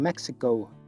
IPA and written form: ˈmek.sɪ.koʊ (México)